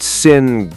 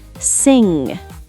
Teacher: The ng creates one sound that comes from the back of your throat and through your nose.